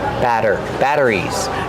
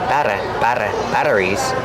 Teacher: Make sure it's a fast D.